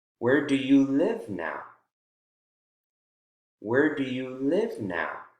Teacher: Where do you live now? Now you can tell has falling intonation.